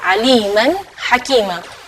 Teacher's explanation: nun sukun ketemu dengan hamzah, maka bacanya nunnya yang jelas